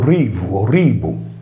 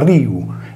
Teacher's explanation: All'interno di parole, invece, solitamente quando la B o la V sono intervocaliche in sillaba atona, vengono sincopate in logudorese e in campidanese, ma non in nuorese